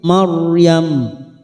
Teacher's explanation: Ra sukun yang didahului fathah kita baca tafkhim